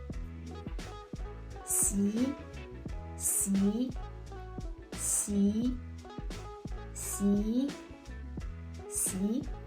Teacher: To pronounce the syllable xi in Mandarin Chinese, we need to push the tip of our tongue against the root of our bottom front teeth and arch up our tongue to squeeze a narrow space for the airflow to come out